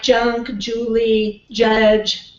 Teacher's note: the manner is combination of two and this is what we call an affricate